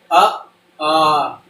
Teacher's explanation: तो आ हमारा जो है कंठ से बोला जा रहा है